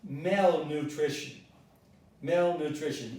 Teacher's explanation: The stress is on mal, so it is malnutrition.